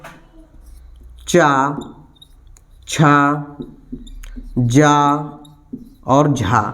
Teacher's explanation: ये हमारे स्पर्श भी करेंगे और संघर्ष भी करते हैं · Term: स्पर्शी संघर्षी